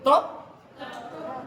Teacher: ऊपर वाले दांत की जड़ को जेहवा स्पर्श करती है